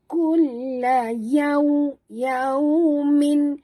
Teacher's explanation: Ya dengan waw sifatnya lin. Jadi kita muncungkan mulut.